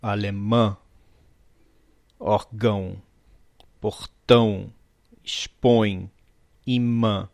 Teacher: O som sai tanto pela boca como pelo nariz. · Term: vogais que são nasais